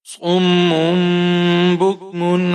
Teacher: اب یہاں پر ہم نے صاد کو میم کے ساتھ ملایا ہے، یہاں پر میم پر تشدید ہے، غنہ کریں گے · میم پر تنوین ہے اس کے بعد حروف حلقی میں سے عین ہے، یہاں پر اظہار کریں گے، اخفا نہیں کریں گے